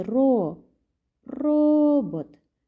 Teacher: тепер робот правильно де ми наголошуємо на першому складі ро робот наголос буде падати на першому складі